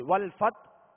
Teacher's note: اسی طرح آگے والفتح اب وقف کریں گے، آخر میں حا ہے، حا ساکن کریں گے، اور حا کی آواز پر جو ہے وہ سانس اور آواز دونوں توڑ دیں گے، یعنی حا کی آواز واضح ہوگی